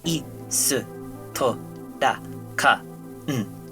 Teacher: You see, Japanese doesn't have stressed syllables in the same way that English does. You usually just run through all syllables with equal emphasis.